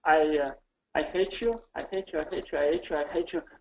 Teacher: American H sound, not silent, but you know, not that articulated.